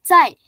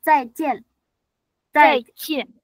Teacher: Ini Z-nya nggak ada anginnya.